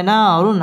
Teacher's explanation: হরফ এক আলিফ টেনে পড়তে হবে না রুন র পুর হবে রুন তানভীন বামে হা ইজহারে হরফ গুন্না ছাড়া স্পষ্ট করে পড়তে হবে